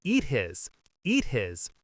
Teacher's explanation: Here the final T is changing to a D. · we need to cut off the H for the word his? So instead, it sounds like a vowel is.